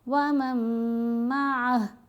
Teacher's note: میم کو میم سے ملائیں گے، نون کی آواز مرج ہو جائے گی، یہ بھی نون ساکن کا ادغام۔